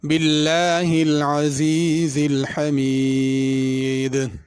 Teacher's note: باللہ کے لام کو باریک پڑھنا یہاں پہ